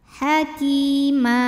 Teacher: Aliman ki matobi'i zahiri, karena ada ya sukun sebelumnya berbaris kasrah, maka huruf kaf ini kita panjangkan 2 harokat